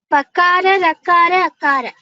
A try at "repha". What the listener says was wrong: You should say repha. For ra, you should say repha. Pakara, repha, and akara.